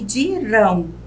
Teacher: dirão é uma oxítona a sílaba mais forte a última